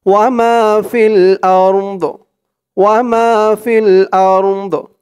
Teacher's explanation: আরদ আরদ আলিফ দিয়ে এই র কেও ধরবে দদ কেও ধরবে আরদ দদের উচ্চারণটা লাস্টে একটু ভাসবে